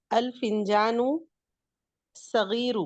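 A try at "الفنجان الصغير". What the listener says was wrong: नहीं, अल फिंजानु सगीरु कहेंगी ना, तो सुनने वाले को लगेगा कि वहां पे अल नहीं है, इसको पढ़ेंगी अल फिंजानु सगीरु।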